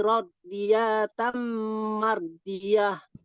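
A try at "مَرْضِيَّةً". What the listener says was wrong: Mardiyah. Mardiyah. Ya-nya ditasdid. Mardiyah.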